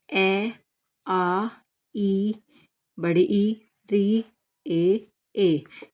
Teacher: उच्चारण में होठों की आकृति वृत्त के समान नहीं होती।